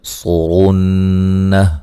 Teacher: صاد کو موٹا ادا کریں گے، را کو موٹا ادا کریں گے اور یہاں نون مشدد پہ غنہ ضروری ہے، وقفاً ہا کو ساکن کر دیں گے۔